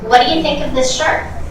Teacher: my intonation goes down at the end of each question.